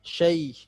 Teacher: Shin tidak tebal, artinya tidak dimonyongkan dan tidak ada suara sya.